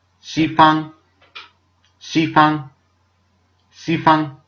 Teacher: It's not actually found in English. It's somewhere in between ch, sh, and s. It's a very aspirated S sound that's difficult for Indo-Europeans, I guess. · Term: X sound